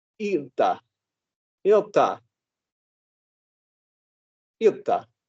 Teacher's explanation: very much in Finnish, the emphasis is on the IL in the very beginning of the word. Is almost all of the emphasis.